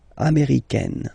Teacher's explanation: it's really open, this AI, américaine